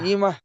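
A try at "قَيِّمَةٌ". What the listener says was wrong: জি, এখানে হা পড়লেন কেন? গোল তায়ের উপর থামতে হলে, তার 3 নম্বর 17 পড়েছেন, এমন গোল চিহ্নকে আয়াত বলে। গোল তায়ের উপরে থামতে হলে সেটি হা সাকিন করে থামতে হয়।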